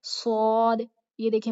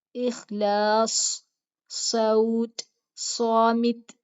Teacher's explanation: یہ موٹی بھی ہوگی اور سیٹی بھی ہوگی صاد کی آواز میں